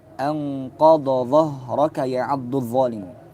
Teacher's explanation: jika keduanya huruf dad dan dha itu bertemu maka wajib membaca keduanya secara jelas, izhar. Bukan diidghamkan.